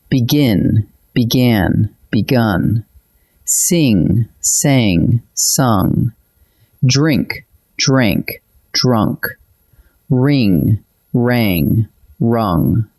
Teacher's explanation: The vowel marches from I to A to U, one step for each principal part. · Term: inner vowel